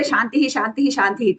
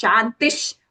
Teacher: Because the Visarga is followed by the letter Sha, right? So that we replace that Visarga with a Sh sound, half Sha sound.